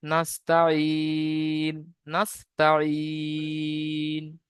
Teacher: তো হুরুফে মাদের পরে থেমেছি, মাদ্দে আরজি ওয়াকফি হবে। মাদ্দে আরজি ওয়াকফিকে 3 থেকে 4 আলিফ পরিমাণ টান দিয়ে পড়তে হবে। নুনের উপর সাকিন এসে, সাকিন আল অক্ষরকে ডান দিকের অক্ষরের সাথে মিলিয়ে পড়তে হবে।